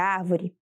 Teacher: Se verificarmos a posição de cada sílaba de árvore, veremos que temos a sílaba aré, penúltima sílaba avó e a antepenúltima sílaba a. A sílaba tônica de árvore é a sílaba a, que é a antepenúltima sílaba da palavra, e por isso ela é classificada como proparoxítona.